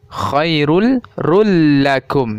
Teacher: Jadi dhammah tain bertemu dengan huruf lam, maka harus dibaca tanpa mendengung. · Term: idgham bila gunnah